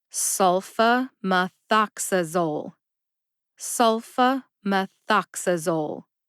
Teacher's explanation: Sul gets the secondary emphasis. Ox gets the primary emphasis.